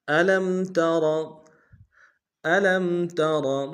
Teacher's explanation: الم تر، الم تر، الم میں لام کو میم کے سامنے لائیں گے، میم ساکن غنہ کریں گے، ترا میں را کو موٹا ادا کریں گے